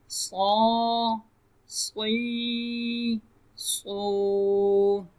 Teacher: صاد کو ہم پر کریں گے کیونکہ صاد حروف مستعلیہ میں سے ہے، تو حروف مستعلیہ جو ہیں ان کو ہر حالت میں پر یعنی موٹا پڑھا جاتا ہے، تو اس لیے صاد کو ہم پر پڑھیں گے یعنی موٹا پڑھیں گے.